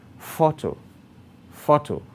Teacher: You note that it's a noun and names something. Its emphasis lies on the first syllable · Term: primary stress